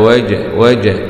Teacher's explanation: جيم سكون مع القلقلة لأنها من حروف قطب جد